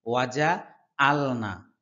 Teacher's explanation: আইনের উচ্চারণ কণ্ঠনালীর মধ্যখান থেকে হবে।